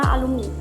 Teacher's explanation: membantu memberikan contoh langsung kepada orang lain contohnya pada kata alumni transkripsi menunjukkan bahwa bunyi u diucapkan sangat pendek atau tertutup